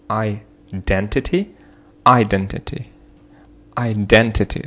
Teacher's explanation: So we have the second syllable, which is stressed. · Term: stressed syllable